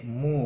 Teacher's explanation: مو واو مدہ ہے، اس کو بھی ایک الف کے برابر کھینچ کر پڑھیں گے۔